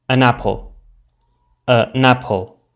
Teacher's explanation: as if they formed one syllable for example in an apple the um of the article forms a syllable with the initial ah of apple · the final consonant sound jumps forward and is pronounced together with the initial vowel sound of the next word as if they formed one syllable · the n of the article forms a syllable with the initial a of apple, so we would pronounce it an apple, an apple.